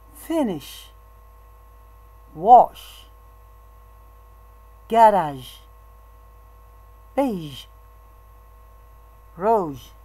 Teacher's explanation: that all the breathe is forced to go through the mouth there is a narrowing between the tip of the tongue and the back of the alveolar Ridge the lips are very slightly rounded